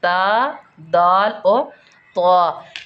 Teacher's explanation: इनका मखारिज है नोक ज़ुबान और सनाया उलिया की जड़ें। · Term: हरूफ़ नताइया